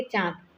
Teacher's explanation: इसका उच्चारण नाक और मुंह दोनों से किया जाता है। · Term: चंद्र बिंदु